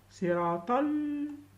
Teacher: See صراط we go from ta to la, and we avoid pronouncing the alif.